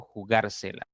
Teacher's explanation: palabra tiene lugar de las cuatro sílabas contando de derecha izquierda la mayor fuerza o intensidad está en la tercera sílaba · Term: esdrújula